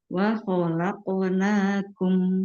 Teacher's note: Huruf qof memantulnya ke huruf O. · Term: qalqalah huruf qof, qalqalah